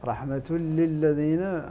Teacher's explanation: هدى ورحمة للذين، رحمة للذين، هذا وجدتم التنوين، التنوين هنا بعده اللام، حكمه الإدغام بغير غنة